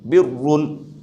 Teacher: تشدید کے بعد دو پیش ہے لہذا پر پڑھیں گے یعنی موٹا کر کے پڑھیں گے ، باریک نہیں پڑھیں گے، برن۔ اس کے بعد نیچے دیکھیے